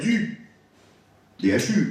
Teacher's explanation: Ce n'est pas du, DHU, avec une voyelle postérieure fermée